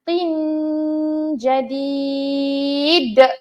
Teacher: kita sembunyikan huruf nun tersebut tapi kita persiapkan nak sebut huruf JIM dalam kaedah gunnah ataupun dengung sebanyak dua harakat